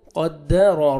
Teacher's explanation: را کو مرزبر ہے، را کو موٹا کر کے پڑھیں گے